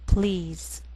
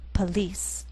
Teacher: The first is one syllable, and the PL blend together.